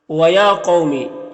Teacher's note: तो इसे एक अलिफ के बराबर खींच कर पढ़ेंगे। यहां पर कफ हरूफ मुस्तालिया में से है तो इसे पुर पढ़ेंगे। यहां पर वाऊ साकिन से पहले कफ के ऊपर ज़बर है तो वाऊ लीन होगा। · یہاں پر واو ساکن سے پہلے قوف کے اوپر زبر ہے تو واو لین ہوگا، اسے نرم آواز کے ساتھ جلد پڑھیں گے